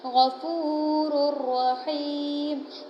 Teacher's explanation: بغیر غنہ کے ادغام کریں گے، یعنی ہم ملا کر تو پڑھیں گے پر وہاں پر غنہ نہیں کریں گے۔